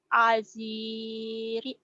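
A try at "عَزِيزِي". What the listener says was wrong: bukan aziri Z itu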